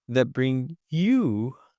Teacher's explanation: He's putting the stress on the word you because you're going to be the most important, word here to be emphasized.